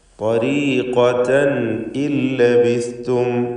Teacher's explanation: തൻ എന്നതിലെ തൻവീൻ അതിനെ ഇൽഹാർ ഹൽഖി നൽകി മണിക്കാതെ വെളിവാക്കണം